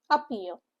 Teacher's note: Syllable stress is on the second syllable.